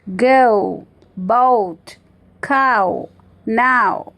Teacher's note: गोल हो जाते हैं। Lips become rounded and tongues move towards ऊ, ऊ साउंड। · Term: closing diphthongs